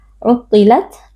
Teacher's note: ada sedikit percikan atau hembusan nafas dari makhraj haruf ta yaitu dari ujung lidah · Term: sifat hams